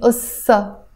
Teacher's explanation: I'm not pronouncing this te marbuta. I'm just saying ussa because the te marbuta is always silent as we know.